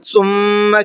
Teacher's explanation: ثم کے میم میں غنہ کریں گے اس لیے کہ میم کے اوپر تشدید ہے